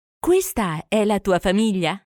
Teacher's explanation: Note the rising intonation of the sentence to mark that it's a question.